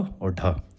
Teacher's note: इनके उच्चारण में जीभ पहले ऊपर की ओर उठकर मूर्धा को स्पर्श करे और फिर झटके के साथ नीचे को आए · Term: उच्छिप्त व्यंजन